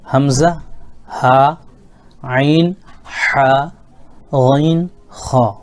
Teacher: یہ حروف حلقی اس لیے اس کو کہتے ہیں کہ یہ حروف حلق سے ادا ہونے والے ہیں، یعنی ان کو نکلنے کی جگہ، جو حرف کے نکلنے کی جگہ، مخرج کہتے ہیں نکلنے کی جگہ کو، تو یہ حرف کے مخارج جو ہیں وہ حلق ہے۔